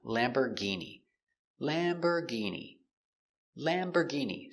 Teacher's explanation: Stress on the first syllable.